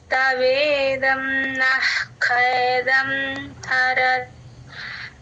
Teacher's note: ఖ ముందు విసర్గండి హెచ్ లాగా సగం విసర్గే చెప్పాలి.